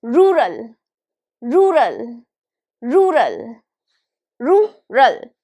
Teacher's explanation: stress is on the first syllable. It's on ru.